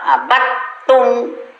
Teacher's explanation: dal sukun masuk ke ta, jangan dibaca dal, abattum. Jadi suara ta yang ada.